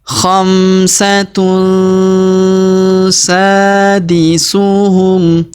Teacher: wau sukun di depannya perhatikan khamun tanwin UN huruf tun ya tanwin UN bertemu huruf sa maka kita dengungkan dan kita samarkan tanwin unnya melebur masuk ke huruf sa